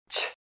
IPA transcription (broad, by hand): t∫